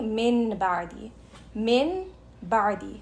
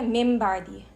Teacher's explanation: जब वो नून साकिन और तनवीन आता है उसके बाद बा, तो हमने नून को मीम के साथ चेंज कर लेना है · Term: इक़लाब